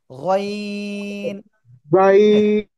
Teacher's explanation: তিন আলিফ টান হবে গলার শেষ ভাগ থেকে উচ্চারণ হবে